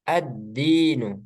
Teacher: jadi langsung ke Dal lamnya itu enggak di dibaca lagi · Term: melebur